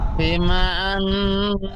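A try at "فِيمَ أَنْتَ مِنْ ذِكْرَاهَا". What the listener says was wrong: ফি টান দেন, ফাইয়াজের ফি ইয়া মাদ্দা টান দিয়ে বলেন।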